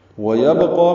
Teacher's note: وَيَبْقَى میں با ساکن پہ قلقلہ ہے، قاف پر ہے، قاف کو 2 حرکات لمبا بھی کرنا ہے.